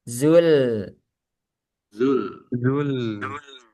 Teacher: Lamnya jangan sampai tebal.